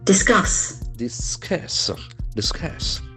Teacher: It has got two syllables accent for the second syllable